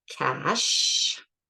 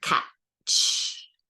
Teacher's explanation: So if I can lengthen it, they're still continuants, ch, j, but they start with a stop. And that's the difference between SH and how I would write it as a TSH. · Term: affricate